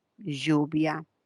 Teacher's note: es una lateral es una lateral palatal